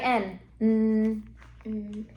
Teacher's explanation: Yeah, it's at the top and it's right behind your teeth, right? But it's also a nasal cuz watch. Put your hand under here and say it. · my tongue is behind my top teeth, right? And it's blowing out air. It's coming through my nose.